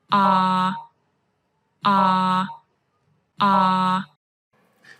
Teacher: your tongue is lowering and it's the back part of your tongue which is moving. So this is a low and back vowel.